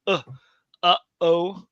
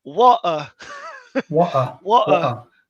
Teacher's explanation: Aleph represents the stop of breath between English uh-oh